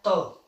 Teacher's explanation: जो त वर्ग होता है ये दंत मतलब दांतों को स्पर्श करता है, दांतों को स्पर्श करता है, तो इसको दंतस्थि भी बोल देते हैं, दंत भी बोल देते हैं, दंत व्यंजन।